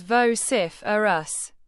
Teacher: Pronounce it as vociferous, with the stress on the second syllable.